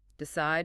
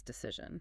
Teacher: Decide has a long I decision has a short I. And the D turns into a z sound.